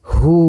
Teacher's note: hu dibaca panjang 2 harokat. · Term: mad silah qasirah